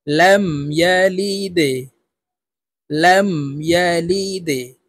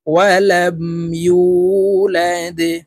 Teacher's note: দালকে নিচের দিকে ধাবিত করে ধাক্কা দিয়ে উচ্চারণ করব, দাল যেহেতু কলকলার হরফ।